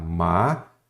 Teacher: Então, a sílaba tônica é a penúltima.